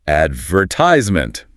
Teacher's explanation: An American speaker will say, advertisement. The stress is on the third syllable